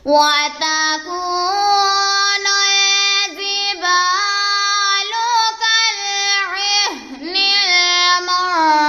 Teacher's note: کاف کو لام کے ساتھ ملا دیں گے، عین کو ہا کے ساتھ ملا دیں گے اور نون کو لام کے ساتھ ملا دیں گے۔ نون ساکن کے بعد فا حرف اخفا میں سے ہے تو یہاں پر اخفا کا قاعدہ ہو رہا ہے، یہاں پر ہم گنہ کریں گے۔ واو ساکن سے پہلے فا کے اوپر پیش ہے تو یہاں پر واو مدہ کا قاعدہ ہو رہا ہے، وقف کی وجہ سے شین ساکن ہو گیا ہے۔